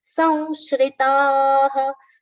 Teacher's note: anuswara on sa has been pronounced as va, nasal va.